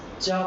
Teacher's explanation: चा बोलेंगे तो जीभ ऊपर टच करती है तालु में